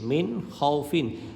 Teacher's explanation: এইখানে মিনে গুন্নাহ করব না, কারণ হলো খ, হামজা হা আইন হা গইন খ, ইজহারের হরফের মধ্যে একটা হলো খ, খ থাকার কারণে আমরা এখানে গুন্নাহ করব না।